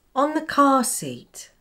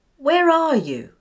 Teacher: R is non-rhotic and is only pronounced when followed by a vowel sound. Well, this happens between words as well, when we speak quickly and link them together. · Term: linking R